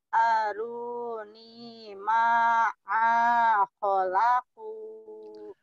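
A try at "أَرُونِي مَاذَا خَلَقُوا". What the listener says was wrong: Bukan ma'a, mada. Mada, yo. Aruni maza khalaku.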